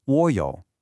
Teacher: In Mandarin, whenever you have two third tones right next to each other, the first one almost magically changes into a second or rising tone. So, instead of saying a clunky wǒ yǒu, it smooths out into wǒ yǒu. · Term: tone sandhi